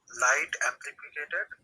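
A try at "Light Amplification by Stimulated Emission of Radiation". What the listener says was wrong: অ্যাম্প্লিফিকেটেড না, অ্যাম্প্লিফিকেশন ভাই।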